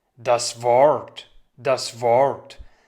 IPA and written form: das vɔʀt (das Wort)